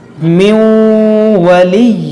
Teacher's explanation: یہاں پر دیکھیے نون ساکن کے بعد واو ہے, واو حروف یرملون ہے, اس لیے یہاں پر ادغام کا قاعدہ ہوگا, یہاں پر غنہ کریں گے, نون کو واو میں داخل کر کے غنہ کریں گے